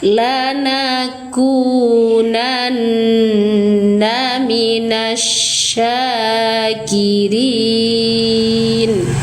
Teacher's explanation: nun bertasydid ghunah musyaddadah atau wajibul ghunah tahan dengungnya tiga ketukan sempurna